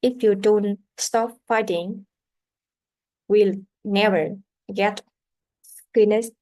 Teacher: the intonations rise a little with the important word fighting, and is a fall a little will never get finished.